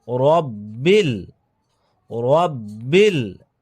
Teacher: এখানে বায় তাসদিদ রয়েছে ডবল হবে